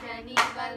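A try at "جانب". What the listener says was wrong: Janib, jimnya yang panjang.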